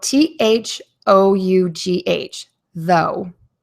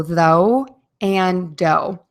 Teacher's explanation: The O, especially at the end of the word, is a little bit longer. So make sure to hold that sound. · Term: the long O